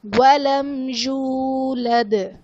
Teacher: دال وقف کی صورت میں ساکن تو یہاں پر قلقلہ خوب ظاہر کریں گے